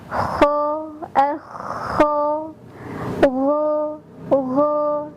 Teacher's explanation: Kedua huruf ini ketika dilafadzkan akan terdengar sedikit suara dengkuran. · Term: huruf ghain dan huruf kha